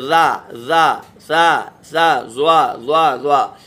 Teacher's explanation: ज़बान के नोक, ऊपर की दांतों की नोक से मिलकर, यानी दोनों दांतों के बीच में ज़बान आ जाएगी। दोनों ऊपर नीचे के दांत जो हैं, ये देखिए, ये ऊपर के दांत हैं और ये नीचे के दांत हैं।